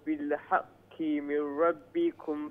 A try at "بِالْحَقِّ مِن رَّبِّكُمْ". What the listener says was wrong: بالحق بقف بالحق من ربكم more stronger the قاف بقف is more stronger okay stronger than the small قاف بالحق because it has shadda as well